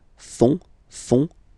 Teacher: final T not pronounced